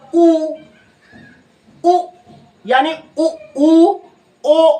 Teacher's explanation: इनमें जो है सर्कल बनता है होंठ का, यानी वृत्त बनता है, तो इनको कहते हैं वृत्तमुखी